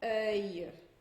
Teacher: a gente continua esse I um pouco mais, a gente dá uma compridada no I que já estava ali.